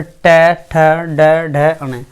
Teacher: मूर्धन्य व्यंजन वे व्यंजन होते हैं जिनमें हमारे जीभ का अगला हिस्सा मुड़ जाता। जब हम उनका उच्चारण करते हैं जीभ का अगला हिस्सा मुड़ जाता, जब हम उच्चारण करें और अगला हिस्सा मुड़ने के बाद हमारे ऊपर जाकर लग जाता, तो उसको हम मूर्धन्य व्यंजन कहते हैं।